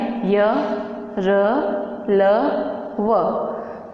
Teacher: य, र, ल, व को उच्चारण करते समय हमें अंदर से कंपन महसूस होता है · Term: सघोष